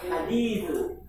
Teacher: Huruf H itu posisi makhrajnya ada di pertengahan tenggorokan atau wastul halq ya.